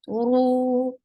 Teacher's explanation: uru is heavy and it is two counts long.